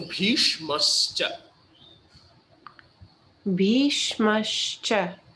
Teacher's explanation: first S, the tongue will be rolled up like as in sharp.